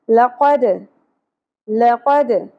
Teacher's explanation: لَقَدْ لَقَدْ قاف پر ہوگا, دال ساکن کے اوپر قلقلہ ہوگا, یعنی ہم نے دال کو اپنے مخرج سے ہلا کے پڑھنا ہے